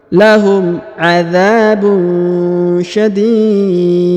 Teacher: Syadid. Kemudian huruf da dipantulkan ya, atau dikolkolahkan karena kita sukunkan huruf da, huruf dunnya menjadi sukun ya.